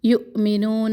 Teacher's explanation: ذین یا مدہ، نون کا زبر لمبا نہ کرے. یؤمنون، حمزہ کے اوپر جھٹکا، واو کے اوپر حمزہ ہے اور حمزہ کے اوپر ساکن. یؤمنون، نو واو مدہ، نون کے زبر کو لمبا نہ کرے.